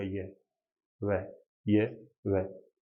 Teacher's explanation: लेकिन यह और वह ऐसे होते हैं जो कम संघर्ष के या बिना किसी संघर्ष के बोल दिए जाते हैं। आप बोल के देखिएगा, यह, वह, यह, वह, इतना ज्यादा संघर्ष नहीं करते। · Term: अर्धस्वर